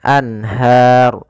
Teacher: karena kita wakaf runnya dimatikan menjadi ro yang disukunkan Anhar kemudian sebelum huruf yang dimatikan di akhir ada huruf mad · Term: Mad Arid di sukun